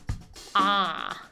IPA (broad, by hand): ɑ